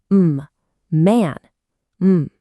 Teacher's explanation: The third sound is a nasal sound, and it's also voiced.